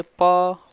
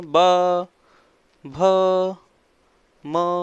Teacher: ये जो वर्ड बने ये होठों से, होठ इनमें आपस में टच हो रहे हैं बार बार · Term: ओष्ठ